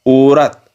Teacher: इसमें औ का ओ सुनाई देता है